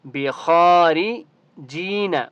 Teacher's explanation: خا کو ایک الف کی مقدار کھینچ کر پڑھیں گے، اور خا مستعلیہ میں سے اس لیے خا کو موٹا پڑھیں گے